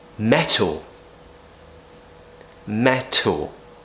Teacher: So the main thing to understand is that this T sound is not voiced. It's a strong aspiration